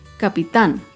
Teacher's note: Capitán es una palabra aguda. Se acentúa en la última sílaba y lleva tilde porque termina en la consonante N.